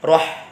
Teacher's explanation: Hati-hati dalam kita melafadzkan huruf ha. Bersih, jangan sampai meleset ke makhrajnya kha.